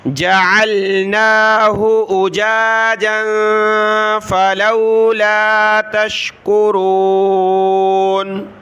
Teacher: نون پر کھڑا زبر ہے، ایک الف کی مقدار اس کو کھینچنا ہے